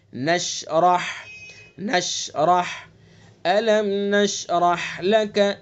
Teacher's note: شین کا جو مخرج ہے، جو صفات ہیں ان کی رعایت کریں گے اور را کو پر پڑھیں گے اور ہا کو اپنے مخرج سے نکالیں گے. ایک ایک حرف کو واضح پڑھیں گے.